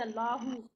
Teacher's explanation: अगर हम हमजा पे ज़बर दे के पढ़ेंगे तो फिर अल्लाहु, ये मोटा पढ़ेंगे